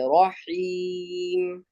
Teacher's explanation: حیم کو حلق سے نکالیے